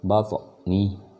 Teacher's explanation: Jadi toknya qalqalahnya kecil karena dia masih ada di tengah kalimat, bukan di akhir. Jadi cukup seperlunya aja huruf qalqalahnya dikeluarkan.